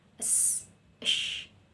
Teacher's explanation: mahmusun, yaitu tak bersuara, yang tidak disertai dengan getaran pita suara.